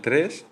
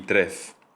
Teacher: En el caso de tres y de trez, lo que ha cambiado es el fonema del final. El sonido S es fricativo alveolar sordo, la S, y fricativo alveolar sonoro, la Z.